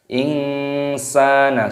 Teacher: Nun sukun bertemu dengan huruf sin, hukumnya dibaca ikhfa. Cara membacanya yaitu dengan cara disamarkan. Insana, seperti itu namanya samar.